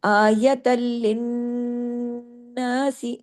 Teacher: आयतल, एक लाम पढ़ने में आया, फिर लिन, लिन में दूसरा लाम पढ़ने में आया। सख्ती से जोड़ना है, बारीकी से पढ़ना है। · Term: लाम डबल